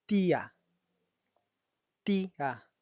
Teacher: haciendo la división entre la I y la A. Tildando siempre, como pueden observar en estos tres ejemplos, tanto la I como la U, que son las dos vocales cerradas.